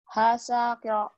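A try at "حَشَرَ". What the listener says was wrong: Shin. Jangan ada tasid. Hasyaro.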